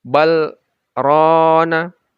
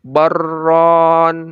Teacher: Dilanjutkan bal rona, dilanjutkan berhenti ya. Berhenti sedikit lalu dilanjutkan. Tapi tidak boleh diidghamkan. Tidak boleh dibaca baron. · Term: saktah